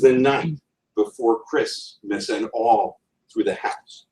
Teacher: first one is stressed second two aren't there's something called anapestic three-part foot where the last syllable is stressed